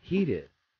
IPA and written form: ˈhiːtɪd (heated)